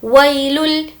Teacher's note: یہاں پر واولین ہے اس لیے نہیں کھینچیں گے.